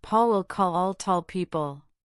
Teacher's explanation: the difference in the resonance of the L sounds at the end of these words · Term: dark L